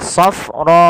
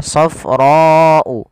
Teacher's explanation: Maka ketika kita mendapati, atau boleh dalam bahasa simpel lagi, adanya mad tabi'i bertemu hamzah, safra'u. Awalnya ra 2 harokat, karena adanya hamzah maka dia berubah menjadi 4 harokat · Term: mad wajib muttasil